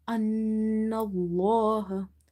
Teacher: before the letter lam in the word Allah, if you see fatha, you will make it heavy